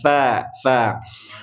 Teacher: Sentuhkan lidah kita ke ujung gigi seri yang di atas ya.